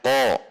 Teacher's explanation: Seharusnya ko. Jadi pangkal lidah tegang karena huruf qaf itu huruf isti'la.